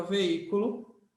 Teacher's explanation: a sílaba forte dessa palavra é esse I aqui tá